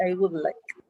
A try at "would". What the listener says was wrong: Would not good, because that sounds like oh good. It's would in this case.